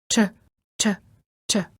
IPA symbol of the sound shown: tʃ